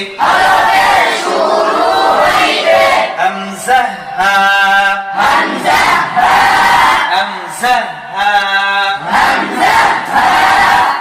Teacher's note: 1 নম্বর মাখরাজ হলকের শুরু হইতে